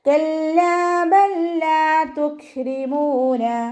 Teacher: കാഫ് സുക്കൂനിലാവുമ്പോൾ കുറച്ച് എയർ പുറത്തോട്ട് പോണ സൗണ്ടിൽ വേണം ഉച്ചരിക്കാൻ